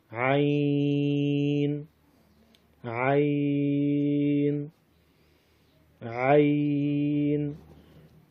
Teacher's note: وسط حلق کے درمیان سے عین ادا ہوتا ہے۔